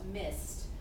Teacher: what's happening here is that ed sounds like a t